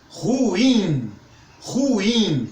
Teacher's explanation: essa palavra é oxítona então força no i